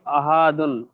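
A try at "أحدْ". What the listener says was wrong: না সাকিন করে দেন। উপশটা তো কেটে সাকিন হবে তাহলে সাকিন করেই দেন না।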